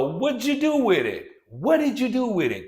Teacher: D plus y gives us J